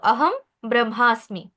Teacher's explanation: লেখার সময় হচ্ছে আমরা লিখবো অনুস্বার আহম ব্রহ্মাস্মি কারণ ব হচ্ছে কি একটা ব্যঞ্জন বর্ণ তাই হচ্ছে আমরা এখানে অনুস্বার লিখবো কিন্তু উচ্চারণের সময় কি করব ম হসন্ত উচ্চারণ করব